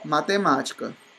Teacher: vamos falar o ma é o mais forte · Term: proparoxítona